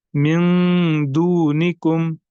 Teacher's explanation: یہاں پر ہمیں اظہار نہیں کرنا، نون ساکن کو ہمیں ظاہر کر کے نہیں پڑھنا ہے بلکہ ناک میں آواز کو چھپانا ہے